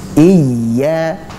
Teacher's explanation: Pada kata iya ini bukan dibaca sebagai ya panjang, ya mat, tapi dia dibaca dengan menjelaskan yang sukun tersebut kemudian baru dihidupkan. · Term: ya asli